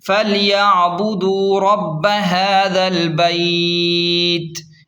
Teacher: وقف کرنے سے تا ساکن ہو جائے گی اور نرمی سے آواز رکے گی